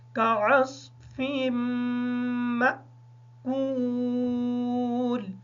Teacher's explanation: اور ایک غلطی عموماً دیکھنے میں آتی ہے، سننے میں آتی ہے، پڑھنے میں آتی ہے کہ جو یہ میم ہے اس کو کاف کے ساتھ ملا دیا جاتا ہے جبکہ میم کے ساتھ حمزہ ہے اور حمزہ ساکن ہے، اس میم کو حمزہ کے ساتھ ملا کے پڑھیں گے